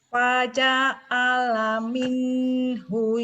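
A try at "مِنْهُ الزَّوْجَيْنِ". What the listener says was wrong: Minhui itu kan zai Bu, bukan iya. Minhuz zai. Zaitun. Zainab. Zainuddin bukan Yainuddin Bu. Bukan Y tapi Z.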